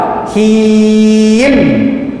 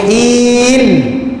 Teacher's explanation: Hi kita panjang 2 harakat baru tarik mim. Huruf mim makhrajnya ialah menggunakan kedua bibir mulut, yang mana bibir mulut akan rapat.